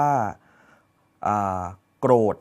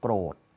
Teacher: คำควบกล้ำเนี่ยไม่มีในภาษาอีสานนะครับแต่มีในภาษาไทยมาตรฐาน